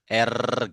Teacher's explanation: Ya, takrir, takrir itu adalah getaran ya, getaran di ujung lidah ketika mengucapkan huruf ro